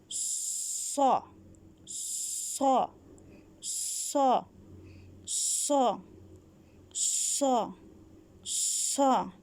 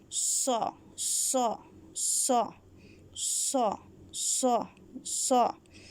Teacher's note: ہماری آواز موٹی ہو جائے گی اور زبان بھی پیچھے سے تھوڑی سی موٹی ہو جاتی ہے، زبان سکڑ جاتی ہے